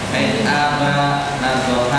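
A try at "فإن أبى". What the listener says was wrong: Jangan aba, fa'in aba.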